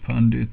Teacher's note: with a retroflex n and a retroflex d